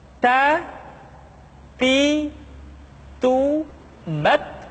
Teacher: Keluar dengan menyentuhkan ujung lidah kita dengan gusi-gusi gigi seri bagian atas. Ta. Kemudian, huruf Ta ketika diucapkan terdengar ada nafas yang mengalir, atau dalam ilmu tajwid disebut dengan sifat al-hamas.